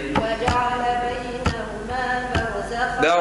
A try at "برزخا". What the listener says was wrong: برزخا مش خاو خاو خا ارفع فخمة.